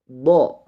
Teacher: Pengucapan huruf do yaitu pinggir lidah kita menempel pada gigi geraham yang atas. Boleh sebelah kanan ataupun boleh juga sebelah kiri.